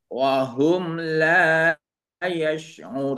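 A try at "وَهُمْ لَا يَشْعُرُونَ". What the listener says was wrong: Nah, sudah baik. Ain nunnya sudah tepat, alhamdulillah ya.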